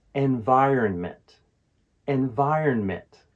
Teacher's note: The key is to put stress on the second syllable, vi, in environment. Another tricky syllable for this word is the R-O-N sound.